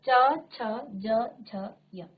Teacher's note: च वर्ग का उच्चारण करते समय आपकी जीभ आपके मुख के अंदर तालु स्थान पर जो है क्या करती है, स्पर्श करती है